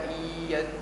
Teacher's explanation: كيف تقول أنت 50% من الفم و 50% من الخيشوم، فرض وقت 50 من هنا و 50 من هنا. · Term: صوت مشترك